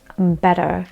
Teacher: I think in American English, the T is pronounced or sound like more of a D.